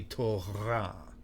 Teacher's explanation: It would be Torah. Okay, a little bit of a guttural thing in the back of your throat, not on the tip of your tongue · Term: proper resh sound